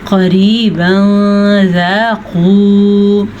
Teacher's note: सबसे पहले तो मोटा क़ाफ, फिर यहाँ पे हमने इख्फा किया है। जैसा कि मैंने आपको बताया था, नून साकिन के बाद रूफ़ इख्फा में से कोई हर्फ आ जाए तो वहाँ पे इख्फा होता है।